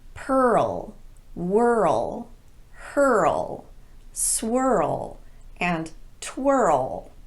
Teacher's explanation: Every one of these is technically a single syllable word, but they're pronounced as if they have two syllables.